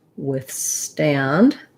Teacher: So my with is a little shorter, even though that may be challenging because I have to get that voiceless TH sound. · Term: second syllable stress